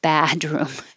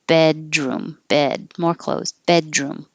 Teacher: Keep your jaw more high. Don't let it sound like ba.